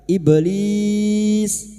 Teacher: ib sukun yang mati asli di tengah kalimat qalqalah sugra jangan lupa dipantulkan